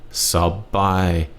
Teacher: low tone first half flat tone second half